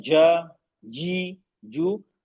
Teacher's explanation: जबान का बीच का हिस्सा ऊपर तालु के चिपक जाता है जीम में